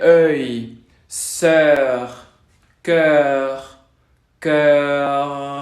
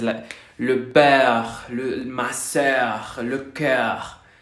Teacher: Estamos haciendo la boca en forma de O abierta, pero pronunciamos E. Para hacerlo, la lengua queda como en una cuenca.